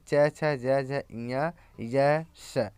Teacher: तालव्य कठोर तालु से यानी च छ ज झ ञ य श